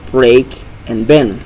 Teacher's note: The sounds b and v are different in English. The sound b is bilabial, like in the words break and bend, and the sound v is labiodental, like in the words very and villain.